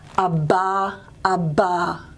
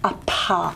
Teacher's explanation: You still get a puff, you still get a little bit of air, but it's not the same kind of puff as you get up here, a pa. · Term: proper voiced one